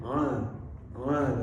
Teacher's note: yang membuat nampak beda adalah sifat tawasutnya tawasut itu suara mengalir sedikit ya Hamzah a Ain a a mengalir ya ya Hamzah disukun